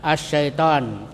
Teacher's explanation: Idgham itu artinya dimasukkan itu ke dalam huruf yang datang sesudah lam. Jadi lamnya tidak dibaca ya. Seperti asy-syaitan. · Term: idgham syamsiyah